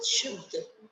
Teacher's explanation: बनाएंगे हम शुद्ध एक साथ बोला जाता है इसको शु और जो द है वो क्या है स्वर रहित है इसमें अ की आवाज नहीं आ रही है